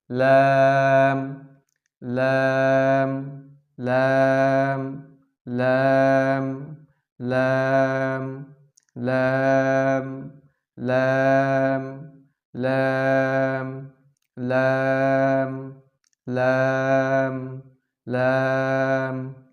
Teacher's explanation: লাম হরফটি পাতলা করিয়া এক আলিফ টানিয়া পড়িতে হয়